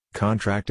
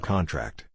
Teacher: Stress on the first syllable is a noun. Stress on the last syllable is a verb.